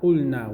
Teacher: قُل, kaf dhamma, qaf dhamma, lam sukoon, qul, noon fatha alif mad, na, قُلْنَا, we said. Here the lam is pronounced clearly because it is lam in a verb.